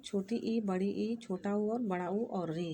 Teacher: जिन स्वरों के उच्चारण में मुख सबसे कम खुलता है अर्थात लगभग बंद रहता है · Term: समृत स्वर